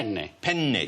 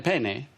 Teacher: In Italian, it's very important that you pronounce a double consonant. There are two N's in the word.